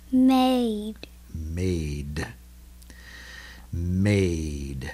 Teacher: We don't hear much of an I there. Just the D.